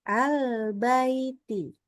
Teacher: dan sama panjang kadarnya antara fathahnya dengan yanya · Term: Lin